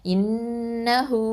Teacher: இது வாவுல் மது 2 அலிஃப் நீட்டணும், இன்னஹு. அடுத்தது ஐன் ஃபத்தா அ, லாம் ஃபத்தா அலிஃப் சகைரா ல.